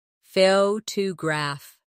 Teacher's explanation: The stress is on the first syllable, photograph. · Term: word stress